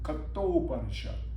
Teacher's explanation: A and u come together, make o, like kata, and Upanishad come kato Upanishad. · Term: Sandhi